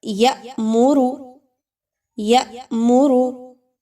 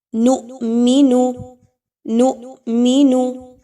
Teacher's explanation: غور کیجئے تو حمزہ پر جھٹکا دیا جا رہا ہے۔